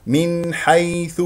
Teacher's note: الحاو من حروف الاظهار السته من حيث ياء ساكنه قبلها مفتوح ياء لين لا تضغط على المخرج ولا تخرج معها هواء